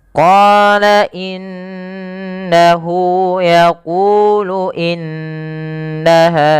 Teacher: kita baca dengan bacaan gunah dengan cara menahan suara bunyi nunnya dan dimasukkan ke rongga hidung sepanjang dua harakat. Maka kesalahan yang terjadi tidak menahan suara nunnya atau misalkan langsung saja qala innahu yaquulu innaha ya itu kurang tepat.